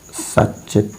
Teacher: यहाँ त वर्ग का त है तो क्रमशः, और उसका च वर्ग के च से योग है तो त के स्थान पर क्रमशः च हो जाएगा। रूप बनेगा सच्चित।